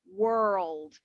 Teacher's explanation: they stress more on the r like they do in america in american accent they will say world so their r is a lot more pronounced